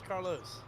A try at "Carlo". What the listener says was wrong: No. Carlo without an S. like wheel, without S.